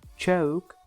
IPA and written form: ʧəʊk (choke)